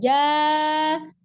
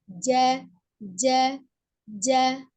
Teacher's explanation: termasuk huruf yang bersifat siddah, ya, kuat, suara tertahan. Jadi dia makhrajnya kuat, termasuk makhraj yang kuat.